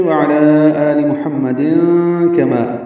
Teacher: تنوین کے بعد کاف آنے کی وجہ سے اخفا کرنا ہوگا ، کما کاف باریک ہے، ما الف مدہ ہے، 2 حرکات